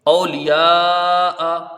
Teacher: لام کے نیچے زیر ہے، جلدی پڑھا جائے گا، یا کے ساتھ الف مدہ ہے، حرف مد کے بعد حمزہ اسی کلمے میں ہے، مد متصل ہوگا